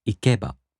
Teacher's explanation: In the flat-type verbs, the accent falls on the mora before ば. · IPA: [ikeꜜba]